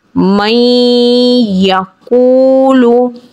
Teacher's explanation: अब यहाँ पे कायदा देखा जाए तो नून साकिन के बाद या आ रहा है और या हुरूफ यरमलून में से है और 4 हुरूफों में से है जिसमें गुन्ने के साथ इदगाम किया जाता है। गुन्ने के साथ इदगाम करके पढ़ेंगे।